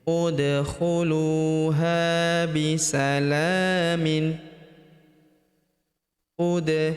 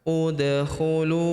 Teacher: Huruf da berharakat sukun kita pantulkan atau kita qalqalahkan. Udkhulu huruf lu kita panjangkan dua harakat karena terdapat wau sukun di depannya yang ini.